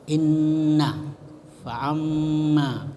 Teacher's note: lagi faamma ya mim bertasdid Nun bertasdid annahu Nah itu juga Nun bertasdid wa Amma dan Nun mim bertasdid itu disebut gunnah gunah itu mendengung jadi wajib dibaca mendengung